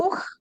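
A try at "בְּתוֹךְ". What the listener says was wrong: No, it's not a two. Betoch.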